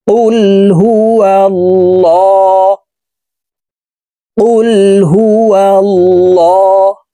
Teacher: জবর ল এই লামকে মোটা অর্থাৎ ল বলে পড়তে হবে কারণ আল্লাহ শব্দের আগের হরফে জবর অথবা পেশ হইলে এই লামকে ল অর্থাৎ মোটা করিয়া পড়িতে হয়